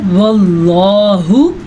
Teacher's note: اب یہ اللہ کے نام سے پہلے زبر ہے تو ہم نے اللہ کا نام پر پڑھنا ہے